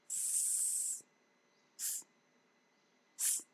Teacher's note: The tip of the tongue goes very, very close to the teeth ridge, not touching it, leaving a small gap so that the air that is coming out from the lungs passes through this with slight audible friction.